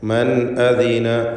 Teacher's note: മൻ അദിന സാക്കിനത്തായ നൂനും ശേഷം ഹംസയുമാണ്. ഇൽഹാർ ഹൽക്കി നൽകി മണിക്കാതെ ഈ നൂനിനെ വെളിവാക്കേണ്ടതാണ്